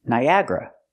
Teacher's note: like four syllables but we pronounce it with three Niagra Niagra put the stress on the second syllable